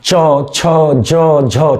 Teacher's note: इस पूरे वर्ग को भी हम मूल स्पर्शी के अंदर नहीं रखते, किसके अंदर नहीं रखते, मूल स्पर्शी के अंदर नहीं रखते, क्यों, क्योंकि इसमें भी ऊष्मा यानी कि आपको संघर्ष करना पड़ता है, तो ये संघर्ष स्पर्शी कहलाते हैं